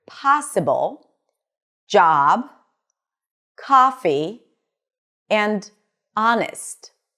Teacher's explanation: It's more towards the back, so the tongue pulls back a bit. Lips are relaxed. And it's slightly longer and more lazy. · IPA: /ɑ/